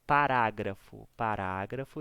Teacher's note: gra é a sílaba mais forte de toda a palavra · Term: proparoxítona